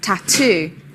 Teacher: Two sounds. Stress is on the second.